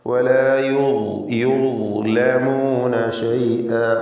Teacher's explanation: യുദ്ലമൂന ളാ തഫ്ഖീം ചെയ്യേണ്ട അക്ഷരമാണ്, ഇസ്തിഅലാന്റെ ഹർഫാണ്.